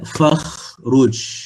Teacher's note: Huruf kha, sifatnya rakhawah